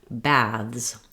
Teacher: But in some cases, when we add the plural, we change our voiceless sound at the end of the word to a voiced sound. So another way that people pronounce this word is with the voiced th and a z